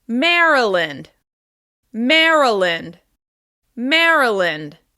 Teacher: As you can hear, the first syllable is stressed.